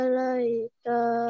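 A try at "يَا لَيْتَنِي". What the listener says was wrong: Ya, iyanya panjang, ada alif kecil di atas. Ya laitani. Mulainya dari ya laitani. Ya laitani.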